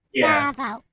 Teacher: you have to uh put the stress on the first syllable